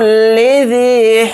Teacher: ذال کے ساتھ یہ مدہ ہے، ذال یا زیر ذی کو تھوڑا کھینچ کر پڑھیں گے